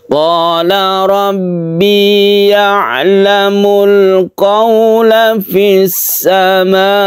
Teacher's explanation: Wajib artinya harus panjang ya, sampai 2,5 alif atau 5 harokat. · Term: mad wajib muttasil